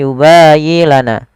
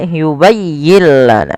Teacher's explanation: Pada lafal yubayyi tekankan di huruf ya, bukan yubayyi lana.